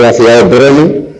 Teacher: Y yo decía, por ejemplo, el otro día que en las lenguas eslavas la R puede ser núcleo de sílaba, por lo tanto la R en las lenguas eslavas, y nos acordamos de la ciudad de Brno, que son dos sílabas, el núcleo de la primera sílaba es la R, bueno, pues ahí eso es una vocal propia de algunas lenguas eslavas.